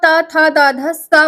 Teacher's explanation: जब आप ता, था, दा, धा, सा बोलेंगे तो आपके जीभ और दांत एक दूसरे से टच होंगे